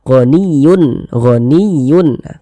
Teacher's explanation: huruf ha hukumnya izhar halqi sehingga dibaca jelas tak berdengung bunyi tanwinnya · Huruf ha termasuk salah satu huruf izhar halqi. Maka tanwin bertemu dengan huruf ha hukumnya izhar halqi sehingga dibaca jelas, tak berdengung.